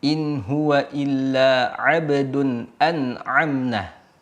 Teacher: Contohnya di an'amna ini ada huruf hamzah dan juga huruf ain yang mana kita ketahui bahwa ain ini letaknya di tengah-tengah tenggorokan atau wasatal halqi. Maka dia harus dibaca di tengah ini, di tengah tenggorokan ini.